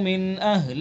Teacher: ان الذين كفروا من اهل میں اظہار ہوگا، اظہار حلقی، نون ساکن کے بعد حمزہ ہاں میں سے حمزہ ہے تو اس لیے اظہار حلقی ہوگا